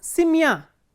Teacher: in simya the ending is stressed, the stress is on ya